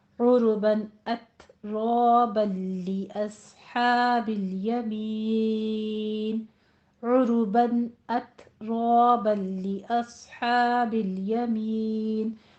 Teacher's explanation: صاد کو پر پڑھنا ہے، لام پہ قلقلہ نہیں کرنا، ہا وسط حلق سے ادا کرنی ہے